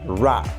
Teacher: The t sound can be pronounced as an aspirated t, like in the word team, or it can be pronounced as an unaspirated t, a normal t, like in the word steam. T also can be pronounced or realized as an unreleased t, like in the word rat